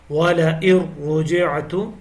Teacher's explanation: یہاں پہ ادغام ہو رہا ہے وَلَئِن رُجِعْتُ، لیکن بلا غنہ ہے، را کو موٹی آواز میں پڑھنا ہے.